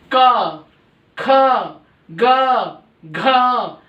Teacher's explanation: तो ये कै वर्ग के जो है वो कंठ से हैं, कंठ्य, इसलिए इनको कंठ्य बोला जाता है क्योंकि कंठ से गले के यहां से ध्वनि निकलती है